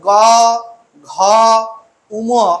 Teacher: করে দেখো যে গ ঘ এবং উম এই বর্ণগুলো উচ্চারণ করলে স্বরতন্ত্রের কম্পনজাত সুর অনেক বেশি হচ্ছে